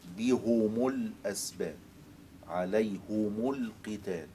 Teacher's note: القراءة الثانية قراءة حمزة والكسائي بضم الهاء والميم